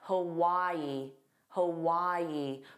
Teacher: Again, there are three sounds. The first sound is unstressed. So, it's a hu and then Y is the stress sound and then a long e, but it's the unstressed sound.